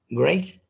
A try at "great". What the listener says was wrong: No es con C al final, sino que con la T. Great.